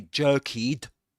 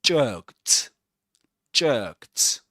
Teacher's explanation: We say jerked. So the ending is pronounced as t.